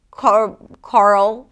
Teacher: The reason why it's so tricky is because there is an R sound, and then a dark L. And sometimes this combination is challenging for new speakers of English.